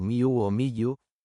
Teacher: En la pronunciación egiptológica convencional, el nombre suena aproximadamente como miu o miyu, es decir, una secuencia de nasal labial seguida de dos semiconsonantes